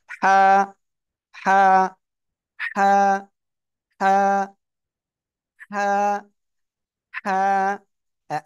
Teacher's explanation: হলকের মধ্যখান মানে গলা গলার মধ্যখান থেকে